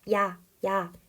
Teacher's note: 그래서 아 같은 대표적인 단모음은 한번 입이 벌어지고 턱이 벌어지면 그대로 고정된 대로 소리가 나지만 야 같은 이중모음의 경우 입이 작게 다물어져 있다가 아의 형태로 벌려지죠. 야 이렇게 위치가 변화한다는 거.